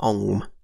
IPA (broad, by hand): ŋ͡m